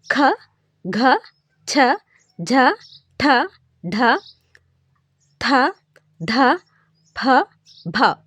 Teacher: ఖ ఛ ఠ ఢ థ ఢ ప భ వీటిని మనం ఒత్తి పలుకుతున్నాం. ఇలాంటి అక్షరాలను మహాప్రాణ అక్షరాలు అంటారు.